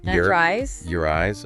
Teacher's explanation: it naturally connects to eyes with that R sound. It could almost sound like one word.